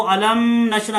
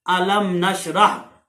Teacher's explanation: ऐसे ही अलम नशरह, बाज दोस्त जो हैं वो अलम नशरा करके पढ़ते हैं, तो ये गलत है क्योंकि यहां तो गुन्ना होना ही नहीं है, ये इजहार शफवी है, तो ये बगैर गुन्ने के जो है लफ्ज पढ़ा जाएगा अलम नशरह।